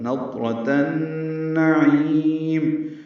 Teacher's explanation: تا کو النعیم کے نون سے ملائیں گے، ادغام شمسی ہے، غنہ بھی ہوگا، نضرۃ النعیم، عین وسط حلق سے ادا کریں گے، لمبا کریں گے اور میم ساکن پہ اظہار ہوگا۔